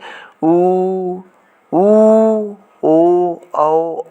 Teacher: वृत्तमुखी वे वर्ण हैं जिसमें उच्चारण में ओठ गोलाकार होते हैं